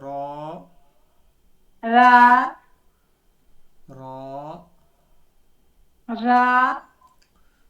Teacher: रा थोड़ा मुंह भरा हुआ होना चाहिए